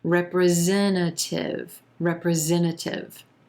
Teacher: that first t sound is falling away it's vanishing